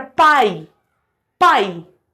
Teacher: o a é mais forte e o i é mais fraco · quando na mesma sílaba eu tenho uma vogal e uma semivogal começo com um som forte e termino com um som fraco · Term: de tongo decrescente